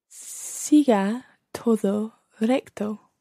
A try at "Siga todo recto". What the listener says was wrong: Let's try to get more of a Spanish sounding O. Todo. Todo. Todo.